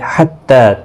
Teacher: تا کے اوپر کھڑی زبر ہے، 1 الف کی مقدار کے برابر کھینچ کر پڑھیں گے